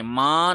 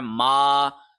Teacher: کوشش کریں کہ ما کو ناک میں نہ پڑھیں، ماں نہ پڑھیں، یہ غلط ہے، ماں پڑھنا غلط ہے، یہ ہے ما۔